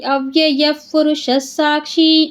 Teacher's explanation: ಇದೆ ಅದಕ್ಕೆ ಗತಿಹಿ ಅವ್ಯಯಪುರುಷ ಸಾಕ್ಷಿ ಇಲ್ಲಿ ಯ ಮುಂದೆ ನಮಗೆ ವಿಸರ್ಗ ಇದೆ ವಿಸರ್ಗದ ಮುಂದೆ ಪ ಇರೋದ್ರಿಂದ ಅಲ್ಲಿ ಆಟೋಮೆಟಿಕ್ ಆಗಿ ವಿಸರ್ಗ ಚೇಂಜ್ ಆಗುತ್ತೆ ಅರ್ಧ ಫಾಗಿ